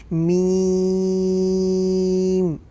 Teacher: دونوں ہونٹوں کے سوکھے حصے سے میم ادا ہوتا ہے